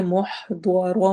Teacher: ح حروف حلقی میں سے ہے، ضاد موٹے حروف میں سے ہے اور را کے اوپر فتحتین آ رہی ہیں، اس وجہ سے ہم را کو بھی موٹا پڑھیں گے. وقف کریں گے تو ایک فتحہ پڑھی جائے گی، وقف نہیں کریں گے تو پھر دونوں ہی پڑھی جائیں گی.